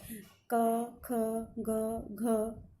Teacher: इनको जब बोलते हैं तब हमारी जीभ जो है उसका स्पर्श कोमल तालु से होता है। क, ख, ग, घ, नंगा, इनका उच्चारण हम कोमल तालु जो पीछे है क। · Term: कोमल तालव्य